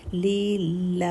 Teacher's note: last کا ہا ساکن کریں گے تو وہ ہا سنائی دینا چاہیے